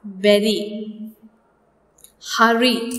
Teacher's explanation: In all these words, the consonant r occurs in between two vowels. So we get a variation or an allophone of r called tap or a flap.